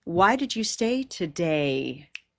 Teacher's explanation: that last word is going to get the most time